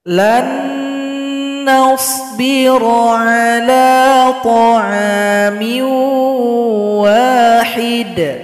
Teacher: di sini ada nun sukun jumpa dengan huruf nun, maka dibaca dengung dan dilebur. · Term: idgham bi gunnah